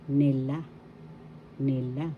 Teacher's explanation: The accent is in the second syllable la.